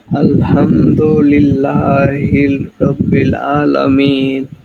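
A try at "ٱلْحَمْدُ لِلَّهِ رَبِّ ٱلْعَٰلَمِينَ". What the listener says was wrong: লিল্লাহ, আচ্ছা বলতে লজ্জা পাওয়া যাবে না, লিল্লাহ হিল না কিন্তু, ঠিক আছে, হিল হবে না, লিল্লাহ হি। ও এখানে লাম নাই কিন্তু, তাকাই দেখেন লাম নাই। আলহামদুলিল্লাহি হি, আলহামদুলিল্লাহি রাব্বিল আলামিন।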